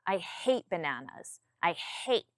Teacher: I hate my tone comes down